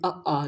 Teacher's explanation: देखिए आप कंठ से निकल रहा है